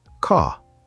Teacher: Let me explain. In British English, the R is often silent. You don't say it strongly.